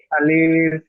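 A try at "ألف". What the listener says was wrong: আলিফ টান হবে না, আলিফ এই কট চিহ্ন আছে দেখেন, আলিফ, আলিফ একটু টান হবে না।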